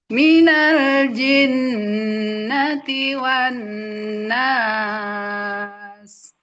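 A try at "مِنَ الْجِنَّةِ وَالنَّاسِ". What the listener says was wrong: Langsung minal jin. Jangan ada jarak antara jim sama nunnya, langsung guna.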